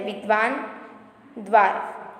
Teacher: जहाँ पर दो ध्वनि आपको सुनाई देती है द की और व की, तो वो पढ़ा जाता है द्व। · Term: संयुक्ताक्षर